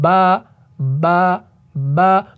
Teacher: में रखें कि मैं क्या मिला रहा हूं बा बा बा तो आपके जो ये तर वाले हिस्से हैं ना ऊपर और नीचे ये दोनों आपस में क्या हो रहे हैं मिल रहे हैं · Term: हर्फ बा